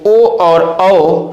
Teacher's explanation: ओ और औ स्वर हमारा कंठोष्ठ है, जिसका उच्चारण हम कंठ और ओठ की सहायता से करते हैं।